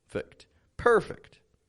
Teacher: Notice how my voice raises a little bit when I say that first per. And then it kind of just goes flat and down.